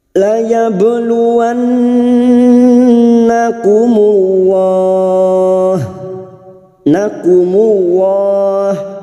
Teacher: Nun yang bertasdid ghunna musyaddadah kita dengungkan selama tiga harakat la yabluanakumullah nakumullah lam jalalah yang didahului dumah kita baca tafkim